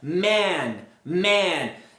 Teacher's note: Quando você tem o a, a pronúncia ela é algo mais longo. Você abre a boca mais verticalmente. A pronúncia você deixou o ar sair durante mais tempo.